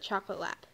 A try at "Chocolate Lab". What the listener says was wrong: Not Chocolate Lap, I'm a Chocolate Lab.